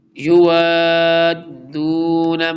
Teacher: واو کے بعد بگ مد ہے اور اس کے فل ٹائم لانگ کر کے دال کے ساتھ جوائن کریں گے